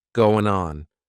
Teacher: Again, we're going to drop that G at the end of the word going. Going on. What do you got going on?